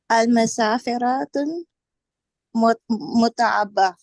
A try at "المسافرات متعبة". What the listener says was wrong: Good job, but there's a mistake. What's the mistake? You said al-musafiratun. Now remember something, and this is a very important rule. Al and tanween can never exist together. When you have al, the noun becomes into a single dhamma. So you would say al-musafiratu mut'abah. Al and tanween can never exist together in the same word.